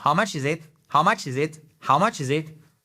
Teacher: Les anglophones vont souvent coller les 4 mots ensemble sans pause. Donc ça va très vite.